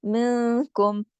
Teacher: ساکن کے بعد کاف آ گیا، تو یہاں پر اخفا ہوگا غنے کے ساتھ